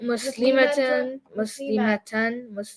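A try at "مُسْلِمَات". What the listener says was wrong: See, the ma was too long?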